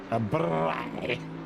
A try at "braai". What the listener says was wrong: You got to roll the R.